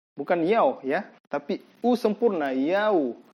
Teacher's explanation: Waw pada saat dia mati atau sukun dan sebelumnya adalah fathah, maka dia terbaca u, yau, tidak boleh o.